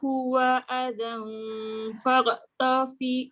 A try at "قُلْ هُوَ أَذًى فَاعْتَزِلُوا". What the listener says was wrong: Tengok huruf Ain. Qul huwa adhan fa'tazilun.